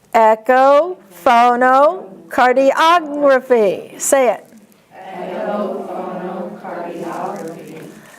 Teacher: Remember the accent is on og.